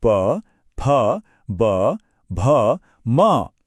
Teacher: दोनों होठों को मिलाना पड़ता है